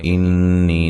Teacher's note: نون مشدد پہ غنہ ضروری ہے، یا مدہ ہے